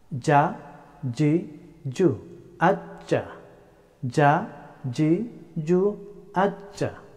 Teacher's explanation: The letter of jim pronounced from center of the tongue and straight up.